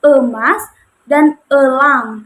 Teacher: posisi bibirnya ini berada di tengah-tengah semi terbuka dan semi tertutup. Jadi tidak terlalu terbuka, tidak terlalu tertutup